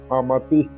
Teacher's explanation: അമതി എന്ന് കഴിഞ്ഞിട്ട് വിസർഗ്ഗം ഉണ്ട് അപ്പോ വിസർഗം വിടലായിട്ട് ഉച്ചരിക്കേണ്ടതാണ്